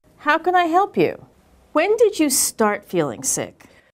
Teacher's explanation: When she asked a question that began with when or how, her intonation was falling